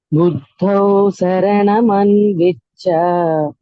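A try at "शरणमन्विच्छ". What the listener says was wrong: You should say Sharanaman Vicha. Sha. Buddho Sharanaman Vicha.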